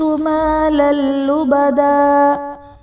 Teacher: تنوین کے بعد حروف یرملون میں سے لام ہے تو یہاں پر ادغام بلا غنہ کا قاعدہ ہوگا، یعنی تنوین میں ہم غنہ نہیں کریں گے